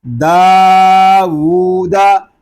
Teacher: उल्टे पेश को हम एक अलिफ तक खींच कर पढ़ेंगे क्योंकि ये वाव मद्दा के कायम मकाम है। यानी जितना हम वाव मद्दा को खींच कर पढ़ेंगे उतना ही हम उल्टे पेश को भी खींच कर पढ़ेंगे।